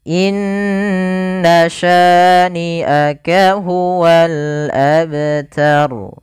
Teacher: bacaan dan diwakafkan menjadi huruf ro sukun sebelumnya fathah atau damah maka dia kaidahnya menjadi ro yang tebal